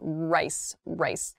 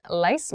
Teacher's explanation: When I make the L sound for lice, lice, my tongue is touching the top of my mouth, lice, and my my tongue is behind my teeth, my upper row of teeth.